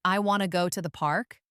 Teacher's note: the important content words like want, go, and park are usually stressed